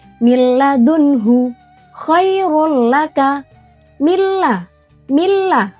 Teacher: Dibacanya tanpa dengung dan bersambung. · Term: idgham bila ghunah